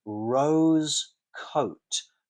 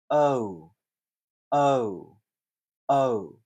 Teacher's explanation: rose coat, beginning with the schwa, and ending in U. O, O, O. And this is like the letter O, rose coat. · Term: U diphthongs